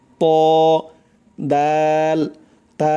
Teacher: 11 নম্বর মাখরাজ হচ্ছে, জিহ্বার আগা সামনের উপরের 2 দাঁতের গোড়ার সঙ্গে লাগাইয়া, খেয়াল করবেন, জিহ্বার আগা সামনের উপরের 2 দাঁতের গোড়ার সঙ্গে লাগাইয়া উচ্চারণ হয় 3টি অক্ষর ত দাল তা